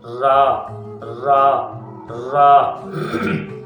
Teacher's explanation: تو را کی آواز جو ہے نا، اس کی آواز کس طرح پیدا ہوتی ہے، اس کا جو ہے مخرج وہ یہ ہے، ثنایا اولیاء اور ربایا، نوک زبان ما پشت زبان، یعنی زبان کی نوک اور ساتھ میں تھوڑا سا زبان کا پشت والا حصہ بھی ان کے مسوڑوں سے لگے گا تو را کی آواز پیدا ہوگی۔